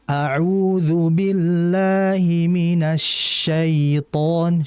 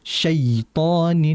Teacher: Siton tidak langsung dihentak ke atas tapi dialirkan dengan lembut.